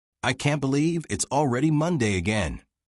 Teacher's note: Notice rising tone on can't believe it. Stress on Monday.